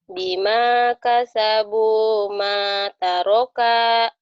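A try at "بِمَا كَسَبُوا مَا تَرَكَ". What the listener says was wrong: Kaknya pendek. Bima kasabu mata roka. Jadi walaupun maknya kosa, taknya kosa, ronya kosar itu masih tetap satu harokat. Mata roka gitu.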